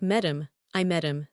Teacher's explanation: But wait, Met ends in a T and I am starts with a vowel. So that T is between vowels. That means it becomes a flap t soft d. So it sounds like metam I met him.